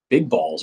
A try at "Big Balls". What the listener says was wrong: Big ball. You didn't pronounce the Z though. It's important. Bzz.